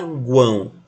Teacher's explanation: eu tenho uma semivogal, uma vogal e uma outra semivogal na mesma sílaba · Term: Tritongo